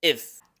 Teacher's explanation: Pero en términos fonéticos, se pronuncia como una schwa. Este sonido vocálico pequeño con una F al final